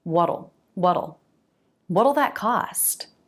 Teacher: you're making a flap T followed by dark L